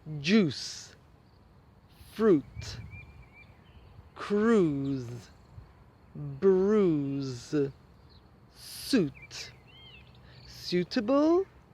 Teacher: words that have an oo pronunciation, so you don't pronounce the I, are juice and fruit